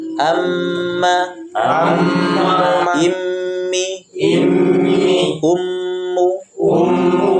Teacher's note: kalau dia bertasdid maka panjang gunanya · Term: gunah